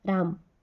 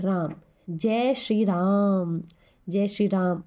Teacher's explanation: फिर आता है हमारा पलूत स्वर। पलूत स्वर जिनके उच्चारण में दीर्घ स्वर से भी अधिक समय लगता है।